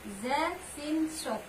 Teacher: Selanjutnya huruf za, sin, shod itu yang keluar dari lidah. Ujung lidah dengan rongga antara gigi atas dan bawah dekat dengan gigi bawah.